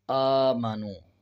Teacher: اب اس کو الف نہیں پڑھیں گے بلکہ پڑھیں گے حمزہ کھڑا زبر آ، اور کھڑا زبر کا مطلب ہوتا ہے کہ 1 سیکنڈ کھینچ کے پڑھیں۔